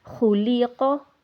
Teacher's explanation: خا پیش خو، لام زیر لی خولی، قاف زبر قا خولیقا، قاف کو موٹا کرنا ہے، خا کو بھی موٹا کر کے پڑھنا ہے، خولیقا، آگی وقف خولق۔